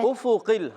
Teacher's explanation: حمزہ کو خوب واضح کریں گے، فا کو بھی خوب ظاہر کریں گے، دونوں پر پیش ہیں، ہونٹ گول ہو جائیں گے